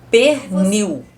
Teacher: na palavra pernil, o L tem som de U